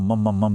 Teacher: मंत्र के आखिर में जो मम मम मम जैसी एक लगातार गूंज होती है, जिसे अनुस्वार कहते हैं